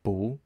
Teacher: that ends also in a fourth tone or a falling tone it actually changes over to a second tone a rising tone